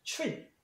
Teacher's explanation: T 다음에 얼이 있으니까 얘도 똑같이 구개음을 해서 트릿이 아니라 치라고 발음하시면 됩니다